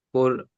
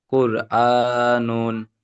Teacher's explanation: র সাকিনের ডান দিকে পেশ আছে, তাই রকে পুর করে পড়তে হবে।